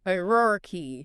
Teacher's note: Emphasis on that first syllable.